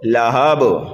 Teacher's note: با کو بھی جلدی پڑھیں گے، لیکن با پر جب ہم وقف کریں گے تو وقف بالاسکان ہوگا، اور یہاں پر کلمے کے آخر میں حروف قلقلہ میں سے با آنے کی وجہ سے یہاں پر قلقلہ بھی کیا جائے گا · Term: قلقلہ کبیرہ